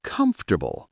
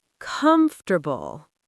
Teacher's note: We skip that middle vowel.